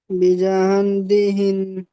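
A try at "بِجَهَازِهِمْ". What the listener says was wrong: জাম গুন্না হবে, এটা গুন্না হবে। বিজাম বিহিম। ইজরা বানান নয়, ইজরা। বায়ের নিচে জের আছে। জালের উপরে যাবার এসেছে।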